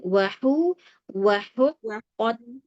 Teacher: Wahu tipis hunya, baru ke qafnya tebal.